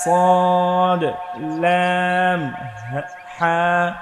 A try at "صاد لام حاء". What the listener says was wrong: এটা হা চাপিয়ে বলতে হবে।